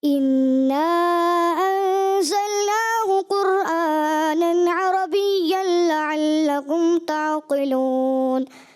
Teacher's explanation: اور قرآ میں تھوڑا سا جیسے را جو ہے اس پہ تکرار محسوس ہوئی